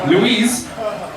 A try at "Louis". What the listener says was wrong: Louis. Without the S. Louis. Louis.